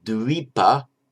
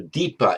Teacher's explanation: By normal phonetic mutation, the dv becomes a d in Pali